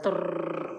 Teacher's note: ఆ నాలుక మనకి ప్రకంపనలు ఇస్తుంది అన్నమాట కాబట్టి దీన్ని ప్రకంపిత్ వ్యంజన్ అని చెప్పి అంటారు హిందీలో ప్రకంపిత్ వ్యంజన్ ఏ